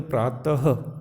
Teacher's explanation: प्रातः, त के बाद में ह का भी उच्चारण होना चाहिए। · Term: विसर्ग